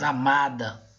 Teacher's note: Já em amada, se nós falarmos amada, nós vamos ver que o ma é a sílaba mais forte. Então, nesse caso aqui, nós temos a penúltima sílaba mais forte. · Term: paroxítona